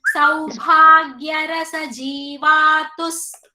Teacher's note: Saubhagya bha is mahaprana.